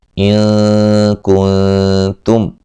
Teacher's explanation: نون ساکن کا یہاں باریک اخفا ہے